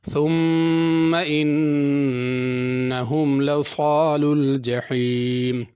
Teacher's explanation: ثم کی میم پہ غنہ کرنا ہے، ثا صحیح ادا کرنی، ثم یا ثم سین یا صاد نہیں پڑھنا۔